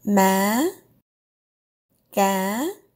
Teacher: Start high and go higher. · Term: up tone